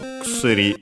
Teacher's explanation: the first u is barely heard if at all, so kusuri, usually.